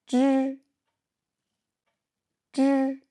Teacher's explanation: Quand on prononce le son j sans le h dans l'API, le papier ne bouge pas. J, j. Mais quand on prononce ch, le papier bougera, car il y a plus d'air qui sort plus fortement.